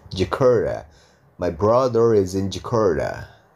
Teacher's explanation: R ketemu t ketemu vokal a berarti t-nya diganti D